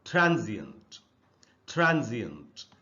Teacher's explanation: अगर आप देखेंगे जी के बाद आधा अ है। अब हिंदी में आधा अ नहीं होता, लेकिन इंग्लिश में आधा अ का साउंड होता है और उसका नाम भी है, उसका नाम है श्व साउंड।